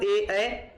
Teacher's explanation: ए का उच्चारण कंठ तालु से होता है